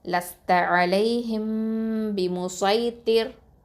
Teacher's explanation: இந்த ராவ எப்பவுமே தர்க்கிக்கா மெல்லினமாதான் ஓதணும்